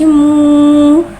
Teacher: वाव साकिन से पहले पेश आ रहा है, वाव मद्दा हो रहा है, लिहाजा वाव मद्दा को एक अलिफ यानी 2 हरकत के बराबर खींच के पढ़ेंगे।